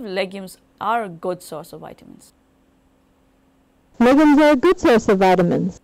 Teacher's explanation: the rise fall is on the accented word, which has shifted its location to good instead of legumes as a result of different question.